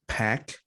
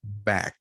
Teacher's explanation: pack voiceless back voiced so my lips are closed